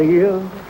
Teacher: he managed to make two syllables out of the word ears